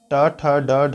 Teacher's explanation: मुर्धन्य मतलब मुंह के भीतरी ऊपरी छत का अगला भाग आगे का भाग